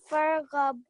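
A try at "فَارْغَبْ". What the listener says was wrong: Very nice.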